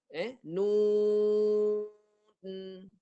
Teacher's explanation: Suara tak boleh keluar dekat mulut bila lidah naik.